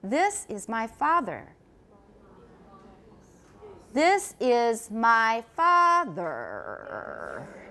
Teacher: in most people's speech the highest pitch will occur on the first syllable father and the lowest on the second